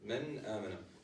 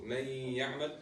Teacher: the elongation of the noon in men amana, which is the timing of the Ghunna, is going to be less than the timing in Idgham